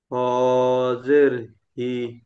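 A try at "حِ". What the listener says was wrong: হ নয় এটা, হাজের হি।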